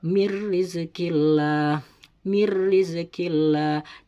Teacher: Dan contoh yang ketiga yaitu nun mati bertemu dengan ro pada lafadz mir rizqillah, mir rizqillah. Jadi dimasukkan suara nun mati tersebut kepada huruf ro sesudahnya nun mati tersebut, mir rizqillah.